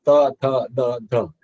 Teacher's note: તમે ત થ દ ધ એમ બોલો ત્યારે જીભ તમારા દાંતની ઉપર લાગશે